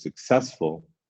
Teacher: So successful, you hear when I say successful, the middle syllable is kind of stronger than the others, stronger than the beginning, stronger than the end.